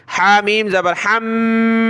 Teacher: ہا کو گلے سے نکالے، میم کے اوپر یہ تشدید ہے تو ہم نے غنہ کرنا ہے